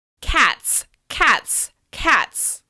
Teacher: Let's add the /s/ ending to the plural of cat: cats, cats, cats, cats. The /t/ sound flows smoothly into the /s/ sound.